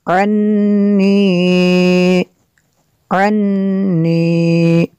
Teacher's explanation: نون مشدد ہے یہاں پہ بھی غنہ ہوگا